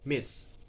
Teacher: M is bilabial, nasal, voice. I is short, high, front, unrounded monophthong. And then S is alveolar, fricative, and voiceless.